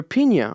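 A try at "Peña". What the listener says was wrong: No, it's with an E. It's Pena in English because it's P-E in Negra, A.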